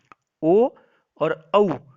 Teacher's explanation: ओ और औ इन दोनों का उच्चारण स्थान भी कंठोष्ठ होगा, अर्थात ओ का उच्चारण स्थान भी कंठ और ओष्ठ होगा और औ का उच्चारण स्थान भी कंठ और ओष्ठ होगा।